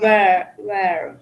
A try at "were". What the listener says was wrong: So be careful because you are pronouncing were like where.